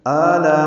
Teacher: میں آ میں مد بدل ہے، یہ 2 حرکات لمبا ہے، لا میں الف مدہ کے بعد حمزہ آنے کی وجہ سے مد متصل ہے، ہم اس کو 4 حرکات سے زیادہ لمبا کرتے ہیں